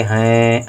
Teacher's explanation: अनुस्वार बिंदु रख देंगे, हैं, ए नाक से आवाज आ रही है